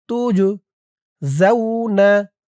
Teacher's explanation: আনফুসাকুম আখরিজু আনফুসাকুম আল-ইয়াউমা তুজজাউনা তা দিয়ে জিম ধরবে। এই জিমটা কলকলার হরফ ধাক্কা দিয়ে পড়তে হবে